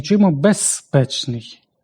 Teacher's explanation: Бо п глухий, своєю глухістю впливає на з і оглушує його. Однак при повільному темпі мовлення оглушення не відбувається.